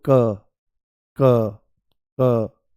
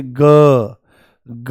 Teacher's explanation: जैसे क जो है ये अघोष है और ग जो है ये सघोष है